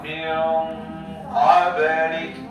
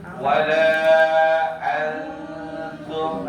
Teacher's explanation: Ketika dia bertemu huruf qaf dan kaf, dia ditarik ke belakang. Karena setelah ikhfa, setelah nun sabar, dia menjemput huruf qaf, makanya hampir mendekati bunyi.